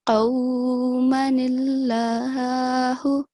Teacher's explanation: So as you can see in these examples at the bottom, we have alif madda followed by a miniature noon. So if I read this in wasl, in continuation, I'm going to drop the alif madda, the alif of elongation.